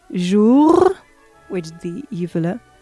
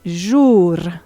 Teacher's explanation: jour, which is the uvular, and jour, alveolar trill